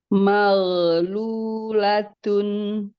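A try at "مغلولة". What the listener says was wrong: Masih mantul dikit. Maghlulatun.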